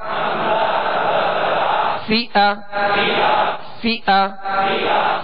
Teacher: فا کو جب ادا کریں گے تو اوپر کے جو دو سامنے والے دانت ہیں اس کے کنارے اور نچلے ہونٹ کا تر حصہ، یہ مخرج ہے، یہ نکلنے کی جگہ ہے فا کے.